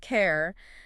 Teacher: for care, you need that nice rounded R sound, clearly articulated